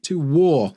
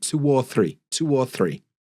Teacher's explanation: we link things together with adding sounds. Instead of 2 or 3, 2 war, we had a w sound